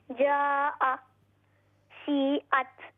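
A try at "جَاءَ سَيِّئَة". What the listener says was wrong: हाँ और लंबा करना है जा सीअत। अच्छा तो जा में मध्य वाजिब मुत्तसिल क्यों है?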